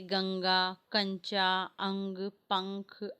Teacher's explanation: इसका उच्चारण करते समय नाक से ध्वनि निकलती है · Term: अनुसार